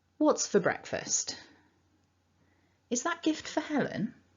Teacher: just remember that the weak form of four is fur and it pops out all the time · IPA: /ə/